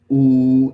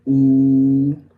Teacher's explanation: Back and high, ooh, and our lips rounded, ooh